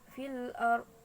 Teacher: Di sana ada ro tafkim, yaitu ro yang dibaca tebal.